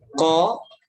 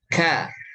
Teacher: Walaupun 2 huruf ini sama ya dari makhrajnya, hanya saja perbedaannya tipis ya. Kalau qaf itu pangkal lidah, nempelnya ke langit-langit yang lunak, ya, langit-langit ya lembek, langit-langit yang lembek. Adapun yang kaf itu dia dari pangkal lidah nempel ke langit-langit yang lembek plus yang bertulang atau yang keras.